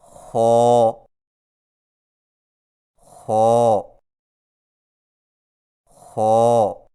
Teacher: زبان کی جڑ کو تالو کی طرف بلند کرتے ہوئے موٹی آواز میں پڑھیں